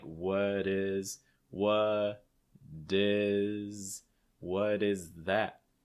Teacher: that t on what is going to take on a fast d sound and it's going to link with the i so it's going to sound like what is what is what